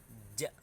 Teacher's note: Tengah lidah dengan langit-langit ja jadi Posisinya itu ada lidah yang bagian tengah meja agar